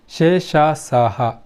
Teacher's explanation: ಈ ಅಕ್ಷರಗಳನ್ನು ಹೇಳಬೇಕಾದ್ರೆ ಬಿಸಿಗಾಳಿ ಉತ್ಪತ್ತಿಯಾಗುವುದರಿಂದ ಇವನ್ನ ಊಷ್ಮ ವ್ಯಂಜನಗಳು ಅಂತ ಕರೀತಾರೆ